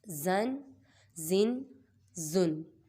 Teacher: یہ زا حروف صافیریہ میں سے ہے، اس کی سیٹی نکالیں گے اور اس کو سختی سے پڑھتے ہیں